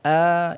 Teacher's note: Hamzah itu makhrajnya ditenggorokkan bagian tengah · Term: huruf hamzah